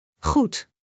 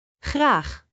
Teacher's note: It is pronounced from the back of the throat. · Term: The Dutch G